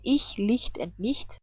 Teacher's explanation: CH can also be pronounced like hi, but without voice